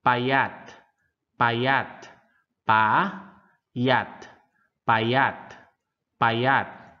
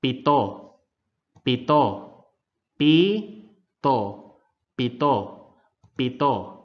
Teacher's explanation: Pronounce the sound without the puff of air coming from your mouth.